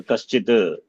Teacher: Sakara in contact with the Chu letter becomes Shakara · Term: Chutva